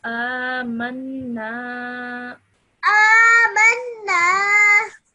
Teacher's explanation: Amanna Okay, so over here, this noon has a tashdid on top of it. That's why you join the meme to the noon with a bit of force.